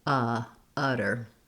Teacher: This one is the stressed schwa, still has the same sound, but it's held a little bit longer